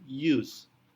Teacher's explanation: Walaupun dimulai dengan huruf U, pengucapannya seolah-olah dengan menambahkan Y di depannya